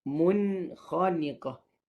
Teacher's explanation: Hakikatnya dia dah ada dengung pada huruf nun itu sendiri.